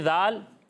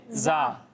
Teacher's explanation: جب آپ دال اور ضا کی ادائیگی کریں گے تو ان دونوں میں سیٹی کی آواز نہیں آئے گی، اور زا میں سیٹی کی آواز آئے گی